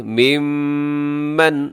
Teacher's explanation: یہاں میم کے اوپر شد ہے، اب یہاں غنہ کیجیے گا